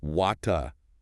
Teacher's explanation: It's pronounced closer to wata, with a clear T sound and often what's called a non-rhotic R at the end, meaning the R sound isn't really pronounced.